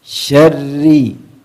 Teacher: ra-nya tidak terlalu banyak getaran.